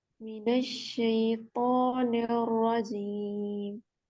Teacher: शई की आवाज बारीक होगी, तो को पुर पढ़ेंगे और रॉ भी पुर होगा।